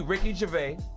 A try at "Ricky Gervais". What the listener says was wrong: It's not a silent S. You can pronounce it.